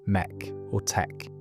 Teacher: the face vowel in make or take was pronounced with a long open sound closer to mek or tek